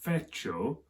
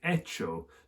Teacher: the f in the latin has become an h in the spanish and spanish h's are silent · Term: silent h